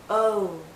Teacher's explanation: as we come to the end of this vowel sound, our lips become even tighter. It finishes actually with a slight ooh sound.